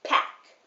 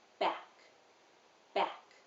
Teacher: when i say pack my lips become very tight together before they release pack but when i say back which is voiced they don't squeeze as tightly together it's more gentle back back so there is a difference in